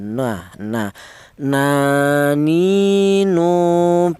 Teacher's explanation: Untuk huruf nun, keluarnya huruf berasal dari ujung lidah menyentuh langit-langit mulut